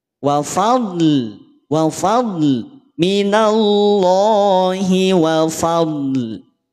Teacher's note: huruf dod itu tidak ada bunyi pantulan, maka jangan sampai dipantulkan